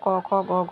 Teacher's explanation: ক বর্গকে আমরা মানে কণ্ঠ থেকে বের হয় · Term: কণ্ঠব্য বর্ণ